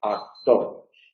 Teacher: la K tiende a relajarse. Es decir, no es oclusiva, sino aproximante. Actor. Y generalmente se sonoriza.